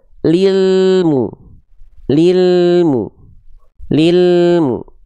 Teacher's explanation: jangan sampai lam sukunnya terputus atau memantul